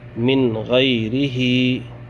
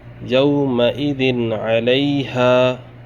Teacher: را زیر ری، ہا کھڑا زیر ہی، غیرہی، من غیرہی۔ نون ساکن کے بعد غین آ رہا ہے، ہمیں اس نون ساکن کو ظاہر کر کے بلا گنہ جلد پڑھنا ہے۔ یا واو زبر یو، میم زبر ما، حمزہ زیر ای، ذال دو زیر دن، یومئذ۔